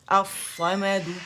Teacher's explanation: ال صاد تھا تو یہ مرج ہو گیا لام صاد کے اندر ۔ اب اس صورت میں صاد کی شکل میں یہ پڑھا